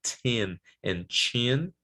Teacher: when it's in the beginning of the word needs aspiration